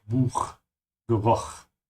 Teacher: the CH is pronounced with a ch sound, with a vibration in the back of your throat, because it comes after a U